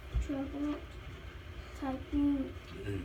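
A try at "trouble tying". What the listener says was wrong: Not typing, but trouble. Tying.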